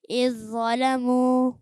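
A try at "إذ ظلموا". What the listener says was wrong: اذ ظا کی آواز نہ آئے. اذ ظلموا. اذ ظلموا.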